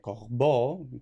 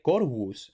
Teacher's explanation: en francés pasa a ser una B puramente oclusiva